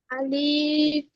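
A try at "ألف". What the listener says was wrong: আলিফে টান হবে না, আলিফে টান হবে না। আলিফ, আলিফ,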